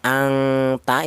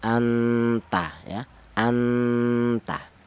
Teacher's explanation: Yang benar ikfa a'la yaitu samar lebih dominan atau lebih kuat daripada dengungnya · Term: ikhfa a'la